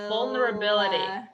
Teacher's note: vulnera you know that got reduced to vulra and then ability you see that the t becomes a d · you see that the t becomes a d because it's surrounded by vowels